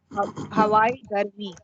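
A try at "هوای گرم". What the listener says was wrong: ये हवाई बना पड़े, ये ई साउंड है, ये आई साउंड नहीं है।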